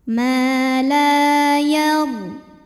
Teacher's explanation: Ma la mad tabi'i zahiri karena ada alif yang didahului baris fathah, maka huruf lam panjang 2 harokat